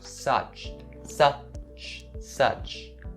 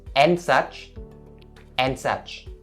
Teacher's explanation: So such has that sound as its vowel, so you say su, and then you end it with the voiceless ch sound